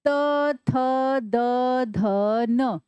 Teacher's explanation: हमारी जीभ दांतों के पीछे वाले हिस्से को टच करती है, दांतों के पीछे वाले हिस्से को हल्का सा ऊपर से, है ना। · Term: दंताहा